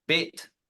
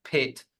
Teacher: we just have two words that vary on that Continuum of when we start vibrating the vocal folds